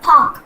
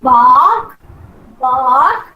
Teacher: when you touch the throat you know you'll have a kind of uh vibration so bark is voiced